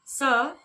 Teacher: स तो जब आप इसका उच्चारण करते हो स तो आपकी जो जीभ है वह दांतों को स्पर्श करती हुई सी प्रतीत होती है। स ऊपर के दांतों को स्पर्श करती हुई सी प्रतीत होती है। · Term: दंतव्य स